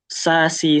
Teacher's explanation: Ujung lidah bertemu gigi seri bawah. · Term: sin